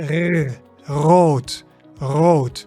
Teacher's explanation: So in English you say r, but in Dutch you say rrr. So you can make this sound by trilling